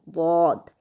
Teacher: زبان کی سائیڈ اوپر کی داڑھوں پر لگے گی تو ضاد بنے گا